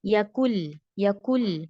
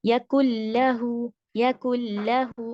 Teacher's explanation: نون کا ساؤنڈ بالکل نہیں نکالنا ہے. کاف سے سیدھا ہمیں لام پر چلے جانا ہے. یکل، یکل، نون یکن نہیں، نون آنا نہیں چاہیے. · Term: مرجنگ